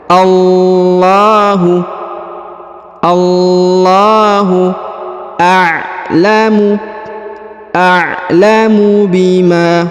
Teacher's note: huruf lam pada lafzul jalalah ditekan dan dipanjangkan 2 harokat